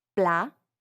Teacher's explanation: Notice how the final T is not pronounced. That's because in French, generally, if a word ends with a consonant, it's silent.